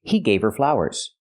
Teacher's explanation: you don't hear the H in her because her is not a stressed word